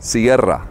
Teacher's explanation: for what time does it close ah que hora sierra and that's a double r sound rolled with the tongue